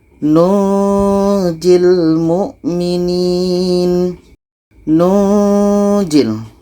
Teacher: Nun mati bertemu ja, ikhfa hakiki, dengung dan dibaca samar. Ketika kita sebut huruf nun ini, kita telah merasakan huruf ja.